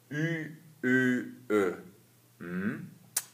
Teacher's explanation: når man udtaler de her vokaler, så har man rundede læber, altså en kyssemund. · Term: Y-rækken